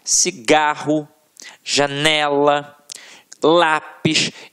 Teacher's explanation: a sílaba tônica está na penúltima sílaba · a sílaba que a gente proferiu com mais força sempre esteve na penúltima sílaba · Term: paroxítonas